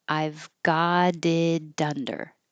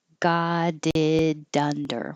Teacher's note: We'll all connect. The T's change to D's, and then they'll connect to the following vowel.